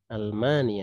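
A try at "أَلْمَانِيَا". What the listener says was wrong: ya, ya-nya tidak tasdid.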